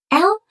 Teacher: L is a lateral approximate where the air flows around the side of the tongue.